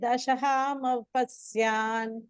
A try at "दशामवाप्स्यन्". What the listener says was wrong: पत्स्यान् இல்லையே दशामवाप्स्यन्